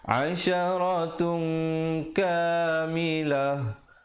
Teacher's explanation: Asalnya asyaratun, tapi bila datang kaf jadi ikhfa 2 harakat.